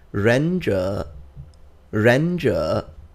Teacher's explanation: read it J they are both in the third tone but when you put two third tones together in Mandarin Chinese the first one becomes a second tone